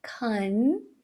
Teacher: Condition começa com can, e aí olha o som do schwa de novo, can, língua sobe em direção aos dentes de cima pro N